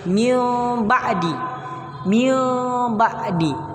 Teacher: Min ba'di alasannya karena nun sukun bertemu dengan ba. kemudian diganti menjadi mim sukun dengan didengungkan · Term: iqlab, iklab